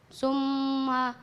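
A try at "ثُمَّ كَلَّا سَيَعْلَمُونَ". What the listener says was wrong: bukan su. Tahan limanya.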